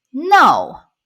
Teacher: fourth tone, go down, very strong tone, no.